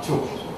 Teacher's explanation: 그래서 지읒으로 바뀐 부계음화가 됐죠. 그러니까 듀 했는데 다시 단모음화가 되니까 죽